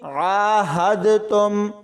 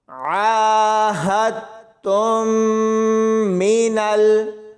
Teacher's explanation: بہت سارے لوگ اس کو پڑھتے ہوئے دال بھی ساتھ میں پڑھ دیتے ہیں، یعنی عاہدتم، تو ایسے یہ غلط ہے۔ ہا کو تا کے ساتھ ملانا ہے، دال کی آواز بالکل بھی نہیں آنی چاہیے۔